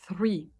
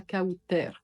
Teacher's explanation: on sort le bout de la langue au niveau des incisives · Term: TH en anglais